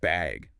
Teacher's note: just bag, with a rising tone